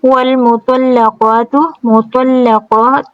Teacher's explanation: تو پر ہے، لام باریک ہے، قاف بھی پر ہے، قاف کے اوپر الف صغیرہ ہے، دو حرکہ لمبا رکھیں گے، تا کے اوپر صرف ضمہ ہے، جلدی سے ادا کریں گے۔